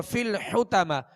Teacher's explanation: حا کو وسط حلق سے ادا کریں گے اور طا کو پر پڑھیں گے